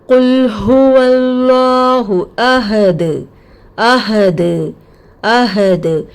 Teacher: دال کی مخارج ٹکر کھا کے الگ ہو جاتی ہے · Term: خلخلا